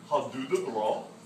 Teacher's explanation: Bra, B-R-A with a rolled R is good.